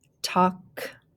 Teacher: these words here with the a-l-k a-l-k word family has that the l is sort of silent so we don't really hear the l